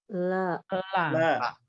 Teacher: Lam ini ujung lidah ketemu atau menyentuh langit-langit depan. Gusi, gusi ya, bukan di gigi ya.